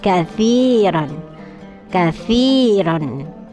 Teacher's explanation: ada ya sukun jatuh setelah kasroh, maka ini dibacanya panjangnya satu alif atau dua harokat, dua ketukan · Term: Mat tabi'i